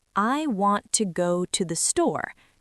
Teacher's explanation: In this sentence, want and store are strong and clear. The word to is softer and faster.